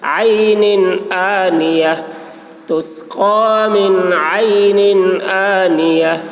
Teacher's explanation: عین آنیہ، یہ نون میں اظہار ہوگا، تنوین کو جلد ادا کریں گے